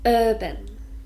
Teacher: it's got 2 syllables, and we stress the first one.